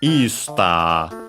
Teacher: accent on the e, just like in English